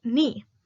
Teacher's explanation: The word initial velar stop k is not pronounced before the nasals n. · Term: sound loss